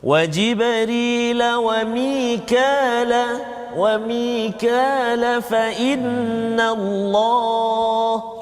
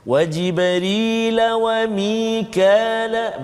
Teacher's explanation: Kalau saya sambungkan bacaan, dia jadi mat asli 2 harakat saja.